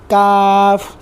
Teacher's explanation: ज़ुबान की जड़ और तालू के सख्त हिस्से पर लगाने से अदा होता है।